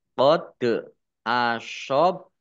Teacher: Dal sukun bacaan qolqalah dibaca memantul ditampakkan pantulannya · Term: kolkolah